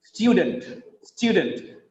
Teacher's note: Because of the stress on the first syllable, stew, the next vowel sound becomes weak. That's why it becomes student.